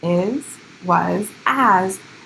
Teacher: Is, was, as, all end in the letter S, but it sounds more like a Z.